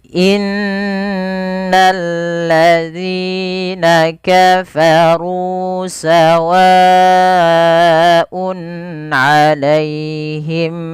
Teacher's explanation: Panjang berapa? 4 harokat karena dia mad wajib muttasil